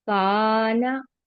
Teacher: काफ को खींचेंगे, नून को नहीं